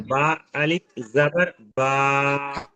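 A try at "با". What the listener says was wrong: মাশাল্লাহ,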